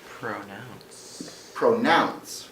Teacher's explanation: It's two syllables and we stress the second syllable.